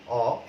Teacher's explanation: এবং অধ্বনির উচ্চারণের সময় ঠোঁটের অবস্থান আমরা দেখেছি যে যখন বিবৃত উচ্চারণ হয় তখন কিন্তু চোয়াল অর্থাৎ এই যে দুই পাটি দাঁত অ একটু কিন্তু প্রসারিত হয় এবং ঠোঁটটি সমান্তরাল থাকে